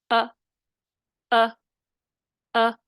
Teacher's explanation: حمزہ کو اس کے مخرج سے، مخرج یعنی اقصی حلق سے، مع صفت جہر اور شدت کے ادا کرنا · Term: تحقیق